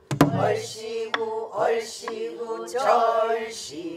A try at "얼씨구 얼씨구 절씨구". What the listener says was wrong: 왜 이게 음이 똑같아?